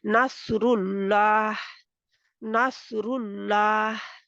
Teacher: वहां पे रा के ऊपर पेश थी, जिसकी वजह से अल्लाह का नाम का लाम मोटा हो गया।